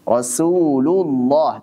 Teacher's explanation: Jadi tebalkanlah huruf lam pada lafaz Allah jika sebelumnya fathah atau dhammah.